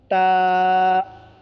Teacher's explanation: ज़ुबान की नोक को ऊपर के दांत की जड़ में लगाने से ता अदा होते हैं। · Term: ता का मखरज